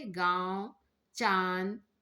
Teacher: अनुनासिक इनका उच्चारण क्या होता है नाक और गले दोनों से होता है